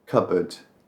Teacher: And we don't pronounce the P, it's just cupboard. We barely say board. Unless you're really over-pronouncing it, it's just cupboard.